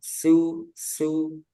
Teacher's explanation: Yang perlu hati-hati ketika domah jangan su itu tebal. Su dijaga tipisnya.